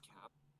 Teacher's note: I'm not going to have a release after the P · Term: unreleased